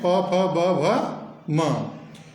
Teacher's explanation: प वर्ग जो है प फ ब भ म इनका उच्चारण स्थान क्या है ओट